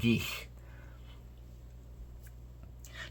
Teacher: I have a little bit more of a breathy sound on the end of that E vowel. And that lets you know that this word actually necessitates a letter after the vowel.